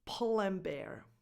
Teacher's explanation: Drop the D in and, because you're connecting everything